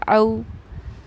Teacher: और पढ़ने का तरीक़ा इसको यह है कि इस आइन वाव ज़बर औ को हम नरम आवाज़ के साथ जल्दी अदा करते हैं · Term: हुर्फ़ लीन